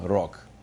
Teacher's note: rok, the word for fate, and rog, the word for horn, sound exactly alike when they're pronounced when the G is in final position. · So you take a word like rog, and in final position, the G sounds like K